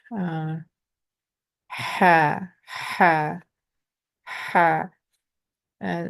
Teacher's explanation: And this is the ha, which I call a moist sounding letter because we constrict our throat, and the air kind of passes through the moisture in our throat, and I think that makes it sound different. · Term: moist H sound